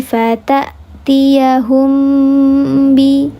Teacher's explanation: dibacanya didengungkan atau disamarkan disertai dengan dengung 3 harakat. Tingkatan gunnahnya sama seperti ikhfa hakiki, 3 harakat kamil. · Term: ikhfa syafawi